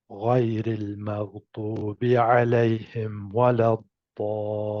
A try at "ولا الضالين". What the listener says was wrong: Sorry, ولا الضالين. I think stretch it a bit longer. And for learning purposes, one of my teachers, he says, you can be extreme for learning purposes. Yeah, stretch it longer.